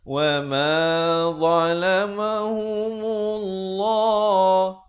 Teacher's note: Lafzul jalalah dibaca tebal 2 harakat.